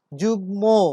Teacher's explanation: ম যুক্ত হয়েছে গ এর সঙ্গে, তার অবস্থান শব্দের শেষে গ এর সাথে, কিন্তু যেহেতু সে গ এর সাথে বসেছে এই জন্য তার উচ্চারণ অবিকৃত থাকবে, সেই ম উচ্চারিত হবে।